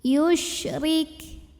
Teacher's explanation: Huruf shin punya sifat yang tidak dimiliki huruf lain, namanya tafashi. Sebarkan angin di dalam mulut.